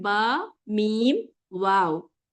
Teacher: ये तीनों लेटर्स आपके लिप्स से, और लिप्स को कहते हैं शफतैन। ठीक है, अशफतैन लिप्स से अदा होते हैं, इसीलिए इन लेटर को अशफतैन से अदा होने वाले लेटर्स कहा गया है।